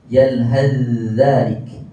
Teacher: Tapi kalau sambung kena guna kaedah idgham, iaitu kita bunyikan terus huruf dan huruf ta dimasukkan ke dalam huruf zal, jadi kita baca terus huruf zal.